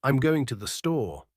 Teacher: in a statement like I'm going to the store The Voice usually Falls at the end